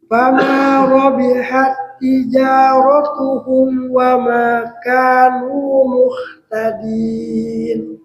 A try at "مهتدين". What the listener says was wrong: Ya, huruf hanya tadi Pak ya. Tidak muh tapi muhtadin.